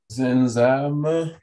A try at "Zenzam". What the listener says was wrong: Ne lisez pas le N.